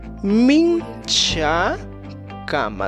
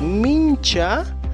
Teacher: la cha sería africada, y luego utilizamos el sufijo kama. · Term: cha africada